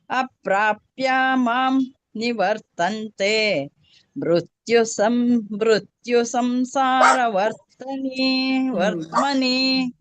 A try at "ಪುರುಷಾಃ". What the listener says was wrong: first ಇದರಲ್ಲಿ ಪುರುಷಾಹ ದೀರ್ಘ ಒಂದು ಹೋಯ್ತು ಬಾಕಿ ಎಲ್ಲ ಕರೆಕ್ಟ್ ಆಯ್ತು